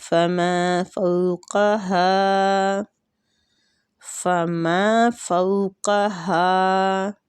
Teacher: قاف مستعلیہ حروف ہے، اس کو پر پڑھنا ہے، ہا کے آگے الف مد ہو رہی ہے، اس کو کھینچنا ہے۔